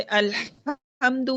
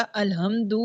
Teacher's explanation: الحمدو میں جیسے رگڑ کھاتی سانس کے ساتھ پڑھنا ہے وہ ضروری ہے، اور دوسرا الحمدو جو ہے وہ سینے سے اس کی آواز نکلتی ہے، سینے کے قریب جو حلق کا حصہ ہے وہاں سے نکلتی ہے آواز.